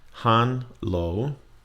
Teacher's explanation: Han, flat tone, and then lo, rising tone.